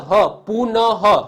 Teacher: છે ન છે પાછળ હ પુનઃ હ હ બોલાય છે ને તો વિસર્ગની જગ્યાએ હ બોલાય છે